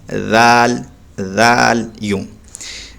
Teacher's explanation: آ رہا ہے، ذال جب ادا کریں گے تو یاد رکھیں اپنی زبان کو دونوں دانتوں کے بیچ سے نکالیں گے باہر، ہلکا سا